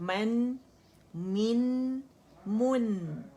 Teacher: میم فتحتین من میں من نہیں بولیں گے, اردو کا من نہیں, من. اور نون کی جو یہ آواز ہے غننے کی, یہ آپ کی ناک میں آنی چاہیے, آپ کو فیل ہونی چاہیے